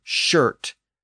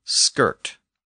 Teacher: the native word has an sh sound and the Norse word has an SK sound